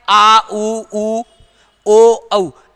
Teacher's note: पश्च स्वर का मतलब जिह्वा का पीछे वाला भाग क्रियाशील रहना